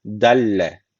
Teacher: gunnesiz bir şekilde bağlıyoruz yani şu l'yi şeddeli okuyoruz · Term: idam bil gunne